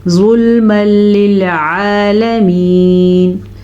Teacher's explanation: तनवीन के बाद लाम या र आ जाए तो फिर दोनों को आपस में मिलाएंगे। इदगाम तो करेंगे लेकिन गुन्ने के बगैर वाला इदगाम होगा ये · تنوین کے بعد لام یا را آ جائے تو پھر دونوں کو آپس میں ملائیں گے، ادغام تو کریں گے لیکن غنے کے بغیر والا ادغام ہوگا یہ، ٹھیک ہے، یعنی کہ ہم یہاں پہ غنہ نہیں کریں گے.